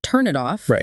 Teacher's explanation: and a vowel starting it yeah but when people talk naturally the consonant at the end of turn often links straight to the vowel in it so it sounds more like turn it off like there's no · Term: linking sounds